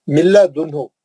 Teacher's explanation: नून गायब हो गया, नो गुन्ना, विदाउट गुन्ना